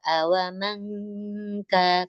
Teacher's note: nun sukun bertemu dengan kaf itu kita baca dengung